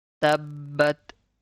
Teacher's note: Press the ba. Hold it for a second.